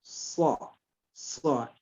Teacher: ujung lidah atas, ya, bertemu dengan pangkal gigi seri depan atas.